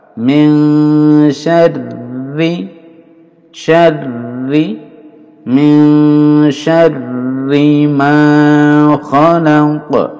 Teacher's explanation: Syarri tasdid di double, huruf ini double lalu ditahan 2 harokat.